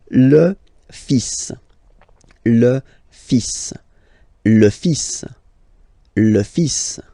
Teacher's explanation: even if you've got this L, well, basically you don't pronounce it, and then strangely you pronounce the final S